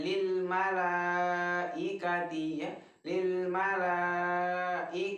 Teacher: Jadi panjangnya 4 sampai 5 harokat. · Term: mad jaiz muttasil